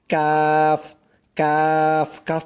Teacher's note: জিহ্বার গোড়া হইতে একটু আগে বাড়াইয়া তার বরাবর উপরে তালুর সঙ্গে লাগাইয়া উচ্চারিত হয় কাফ। কাফ, কাফ বলার সময় মুখটা একটু চ্যাপটা হবে, মানে শক্ত করে একটু চ্যাপটা করে বলতে হবে কাফ, এরকম করে।